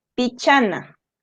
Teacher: acá como la penúltima sílaba es la cha le ponemos la mayor fuerza de voz en la cha